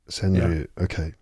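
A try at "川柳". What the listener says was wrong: The r is pronounced as a d basically.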